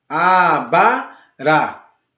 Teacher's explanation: Abará, tá ok? Esse último A, ele é acentuado. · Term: oxítona